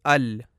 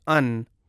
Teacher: نون کا مخرج۔ ان اوپر والے تالو کو جب لام کے لیے زبان لگتی ہے اس سے تھوڑا نیچے نون کی ادائیگی ہوتی ہے